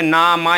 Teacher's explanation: ज्यादातर नाक से आपको महसूस होता होगा, जैसे ना मा इनको बोल के देखोगे, ना से थोड़ा सा नाक से महसूस होता है। इसी वजह से इन्हें नासिक्य वर्ण कहते हैं।